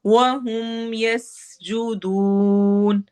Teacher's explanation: सीन में सिटी वाली आवाज होगी और यस्जुदून वो मद्दा होगा।